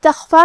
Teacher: خاء کی ادائیگی حلق کے اوپر والے حصے سے ہے، خاء حروف التفخیم میں سے بھی ہے تو ہم یہ حرف کو بھاری آواز میں پڑھیں گے